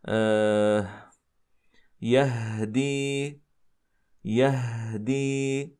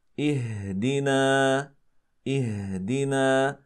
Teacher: بتباعدهما الان عندنا حاله الوسط وهي لله تخرج الهاء بانفتاحهما الجزئي الهاء تخرج بانفتاح الوترين الصوتيين جزئيا